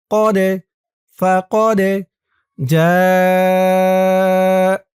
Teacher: এই দালটা কলকলার হরফ, ধাক্কা দিয়ে পড়তে হবে